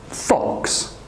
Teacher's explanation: Fox, once again, the bottom lip touches the top teeth.